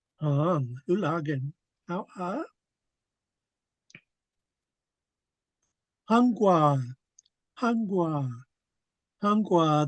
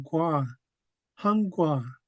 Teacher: The first half is high. Last part is low tone.